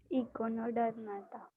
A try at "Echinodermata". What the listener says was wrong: econo नहीं. Echinodermata. Okay, spiny skinned बोलते हैं ना, echinos.